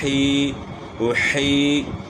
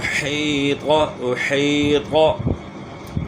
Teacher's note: حا کی آواز گلے کے درمیان سے نکلے گی